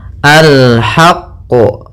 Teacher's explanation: sebelum memantulkan huruf qaf yaitu kita tekan dulu huruf qaf karena huruf qof di sini huruf yang bertasdid maka alhaqqu ya tapi tidak sampai sakta jangan sampai alhaqqo gitu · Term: Qalqalah kubra